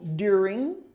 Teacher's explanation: This is where the emphasis is. This is the accent is on the first syllable, during. You just have to have the R sound in there too.